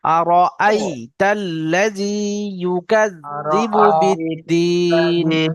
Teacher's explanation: أرأيت الذي পড়ার সময় খেয়াল করব যেন আমাদের আর আরই আরই এরকম যেন না হয়ে যায়, র এবং হামজা দুটো যেন আলাদা হয়